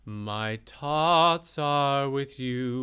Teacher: with an emphasis on the hard T of the TH of thoughts